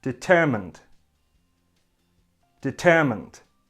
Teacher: It has 3 syllables and the stress is on the second syllable. The only difference is we have a D sound at the end.